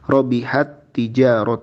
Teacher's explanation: Maka karena terjadi pertemuan dua huruf yang kembar, huruf pertamanya sukun dan huruf keduanya berharokat, maka huruf pertamanya langsung melebur ke huruf yang kedua. Robihat tijaratuhum, tidak robihat. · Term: idgham